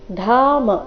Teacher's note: ಧ ಮಹಾಪ್ರಾಣ ದೀರ್ಘ ಬರಬೇಕು